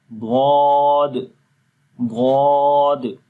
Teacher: جب اس کو یہاں پر یہ تیسری امیج کے اندر آپ دیکھیں کہ جب ضاد کو پڑھتے ہیں تو زبان کی جو پیچھے والا حصہ اوپر کی طرف اٹھ رہا ہے، یعنی کہ آواز اوپر کی طرف اٹھتی ہے، تو پڑھتے ہیں ضاد ضاد۔